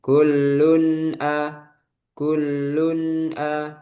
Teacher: Yang benar habis selesai bainiyah gitu ya. Dari nun sukun itu nggak ada terjeda langsung ke a gitu.